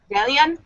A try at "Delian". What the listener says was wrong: Just make the two L's a Y sound.